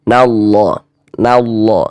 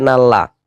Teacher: lafaz Allahnya ini huruf lam jalalahnya dibaca tebal, dibaca tafkhim